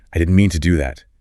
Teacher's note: Notice the t sound in didn't might soften or disappear and to becomes tu.